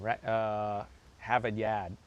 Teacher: You got that non-rhotic Boston accent.